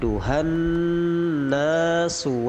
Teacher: Nun dimasukkan dengan mendengung